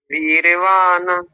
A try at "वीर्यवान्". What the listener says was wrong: अब भी पूरा बोल रहे हैं, न नहीं बोलना, वीर्यवान। न नहीं बोलना, आप बोल रहे हैं वीर्यवान, ऐसा नहीं, वीर्यवान। हाँ अब ठीक है, ये आधा और पूरे का अंतर ध्यान रखिए, कई बार बताया है ये पीछे भी मैंने।